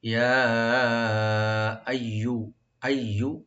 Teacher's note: ইয়া এখানে আমরা মধ্যে মুনফাসিল 3 আলিফ পর্যন্ত টানতে পারবেন